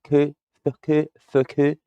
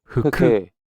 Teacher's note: It's f f. We have to truncate the first u.